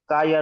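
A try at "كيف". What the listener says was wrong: কা কাই কা কাই নয়। কাফ ইয়া যাবার কাই।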